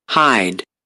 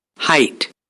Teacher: the duration of hide is more than in height.